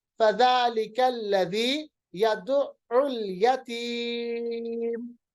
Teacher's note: मीम को साकिन बनाइए, या पे आएगी मद, मद आरिज लिस्सुकून